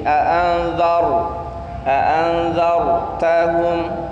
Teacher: A'anzar di sana za bertemu dengan ra. Ra-nya sifatnya tebal.